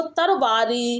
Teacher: अवधि में जो ला की ध्वनि है वह प्राय रा हो जाती है